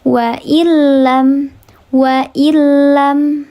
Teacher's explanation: nun sukun bertemu dengan huruf lam. Dibacanya dileburkan saja tidak dibaca panjang.